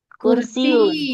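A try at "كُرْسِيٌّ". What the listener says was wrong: kursiyun. Jadi di sini tuh selain ya itu sebenarnya ada tasjidnya. Jadi ya-nya itu harus di tasjid. Jadi double ya sebenarnya. Kalau tasjid itu artinya double, huruf itu di double gitu ya.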